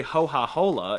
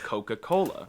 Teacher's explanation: they screw up the ka sound and say them as H's. So they say ho-ha-hola instead of Coca-Cola. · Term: La Gorgia Toscana